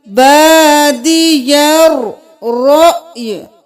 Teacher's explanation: یہاں پہ رو کے ساتھ حمزہ ہے، اس کے اوپر جزم ہے تو ہم جھٹکا دیں گے، پھر ہم یا کو ساکن کر دیں گے، رأی نہیں کریں گے، رأی، یا کی صرف آواز آئے گی، بادی الرأی۔